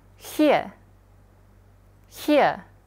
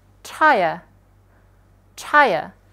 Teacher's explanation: walaupun di sini ada R, tapi R-nya nggak dibaca gitu ya. Yang mana nanti dia akan kena dibaca jadi ear gitu.